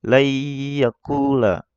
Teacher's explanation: Yang benar adalah layyakula ya, agak didengungkan lah, agak ditekan pas di tasdid ya-nya ini. Layyakula karena di sini idgham bigunnah ya, harus digunnah.